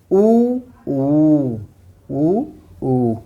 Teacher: तुरंत ओठ हमारा घुमाव आ जाता है ओठों पे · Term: ओष्ठ